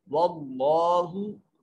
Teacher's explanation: इसमें जलालत से माकबल जबर है तो इसमें जलालत के लाम को मोटा करके पढ़ेंगे। वल्लाहु, लाम को लंबा भी करेंगे क्योंकि अलिफ अलमदिया सगीरा मौजूद है।